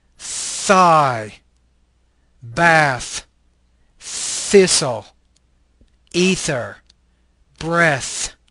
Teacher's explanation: this is a interdental fricative voiceless consonant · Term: Theta